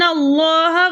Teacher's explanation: لفظ اللہ کی لام سے پہلے زبر ہونے کی وجہ سے لفظ اللہ کی لام کو ہم موٹا پڑھیں گے